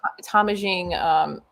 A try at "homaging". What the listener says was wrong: Just pretend like there's no H.